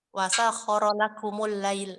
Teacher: lakumul lail ini juga mim jamak dibaca domah